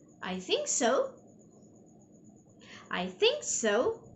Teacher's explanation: the last syllable which is so okay i raise up my tone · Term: rising intonation